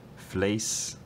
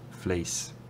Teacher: the starting point and the ending point of the tongue are further apart for Jerry Adams than they are for Lisa McGee. So for Jerry Adams, I would suggest maybe something like fleece, and for Lisa McGee, maybe something more like fleece. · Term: fleece vowel